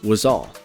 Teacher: a Z Sounds links to the word all